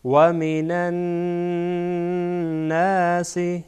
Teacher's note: و من الناس اینجا نون با نون وصل میشه و این نون در اینجا مشدد غنه میشه